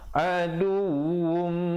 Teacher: Adum, wajibul idgham bi gunnah di situ. Tanwin bertemu mim, dengung masuk beserta dengung 2 harakat.